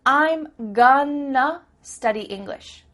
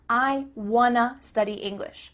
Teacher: the word two changes to uh